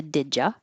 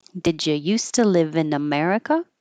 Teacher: did you, again, turns into did ya